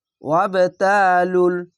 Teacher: কলকলা ধাক্কা মেরে নিচে সাউন্ড আসবে